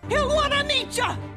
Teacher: And finally, for meet ya, we see that when T plus Y connects, we usually have a ch sound, as in cheers, and the reduction of you to ya. Again, the you reduction is also very common in native speech, so in casual conversations, you can also spell it like ya.